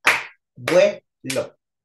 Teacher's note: vocales que se juntan de manera natural en un solo sonido silábico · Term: diptongación